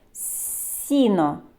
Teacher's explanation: звук с який це звук це М'який приголосний звук його ми позначаємо двома рисочками Сі і сіно Який наступний звук